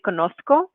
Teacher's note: if you are wanting to train more of a Spain Spanish accent, they pronounce this letter, the zeta, as theta, more like a TH sound. So you'd say conozco.